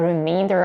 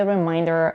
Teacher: The difference between the two words is in the vowel in the second syllable. Remainder is pronounced with a diphthong A as in main, and reminder is pronounced with another diphthong, I as in mine. The rest of the vowels in both words are reduced to a schwa.